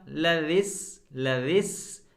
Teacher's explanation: जैसे ही हम सीन पर पहुँचे एक ससराहट की आवाज़ सुनाई दी, जो सा में बिल्कुल नहीं होनी चाहिए।